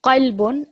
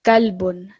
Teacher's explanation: qaf is from a different part of your throat, and it's more of a thick letter, whereas kalbun is quite a thin letter. Qalbun and kalbun, big difference, heart and dog.